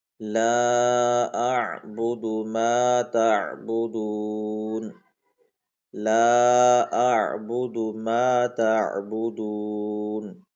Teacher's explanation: ایک تو عین کو حلق سے نکالیں، دوسرا دال کو ہم نے اس کو لمبا نہیں کرنا